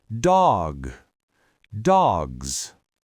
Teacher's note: And cuz that final G and Z are voiced, the vowel in the middle of the word has to stretch.